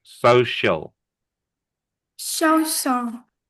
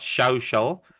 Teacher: It's not an sh. It's only an s.